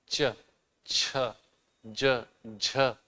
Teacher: च वर्ग एक ऐसा वर्ग है जिसमें स्पर्श भी है और जिसमें सांस को बाहर निकलने में संघर्ष भी करना पड़ता है।